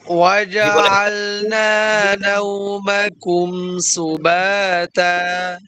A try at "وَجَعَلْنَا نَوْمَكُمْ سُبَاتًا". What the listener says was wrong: সিনটা পাতলা করবেন সুবাত হয়ে যাচ্ছে একটা সুবা সিন পাতলা করে ঠিক আছে